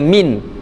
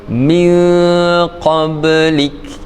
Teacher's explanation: Dibaca dengan dengung, samar. Kita tak dengar bunyi jelas nun dia. Kita tak baca min, kita baca min qablik, min M-I-N-G, min qablik. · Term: ikhfa hakiki